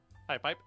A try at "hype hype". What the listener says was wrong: It sounds like you're saying high pipe.